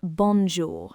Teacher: That on sound is what we call a nasal sound. You don't really have it in English. To make it, try saying on, but push the air through your nose instead of just your mouth.